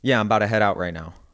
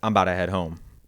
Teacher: we smooth out our mouth diphthong whenever it's unstressed